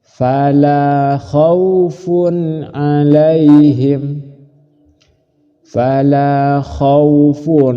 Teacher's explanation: cara membacanya yang benar langsung tidak usah berdengung dijelaskan tanwin jelas Ain jelas terang